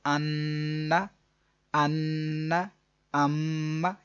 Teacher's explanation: تو غنے کی جو ڈیوریشن ہے، غنہ کرنے کی جو آواز جاری رہے گی ایک الف کے برابر، مین ایک سیکنڈ تک آپ جاری رکھیں گے.